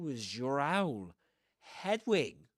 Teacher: the final z in was is right before the ya in yo. So you get zyo. When these two are together, these two sounds, you get z, was you.